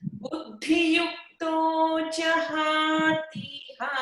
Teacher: There is a Mahaprana here, DH, Buddhi. So, but BU should be a lighter one. Lot of air should not be coming out when you're uttering this syllable. · if you're seeing the English one here, it is DDH. There is a Mahaprana here, DH, Buddhi. So, but BU should be a lighter one.